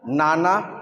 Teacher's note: নানা জিভের ডগা আর একটু উপরের তেলের দিকে লাগাতে হচ্ছে।